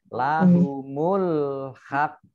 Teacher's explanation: Karena qafnya yang terakhir itu sukun, dibaca sukun, maka menjadi qalqalah